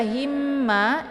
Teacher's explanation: bertasydid maka ini keluarlah hukum idgham mimi atau idgham mislain jadi hukum idgham mimi itu cara bacanya itu didengungkan ya Ini ditahan ya cara bacanya sehingga temponya dua harakat jadi cara baca himma ditekan h nya kemudian ditahan Barang 2